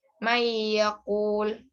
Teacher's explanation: nun sukun atau tanwin dimasukkan menjadi satu dengan huruf sesudahnya dan dibaca mendengung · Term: Idgham Bighunnah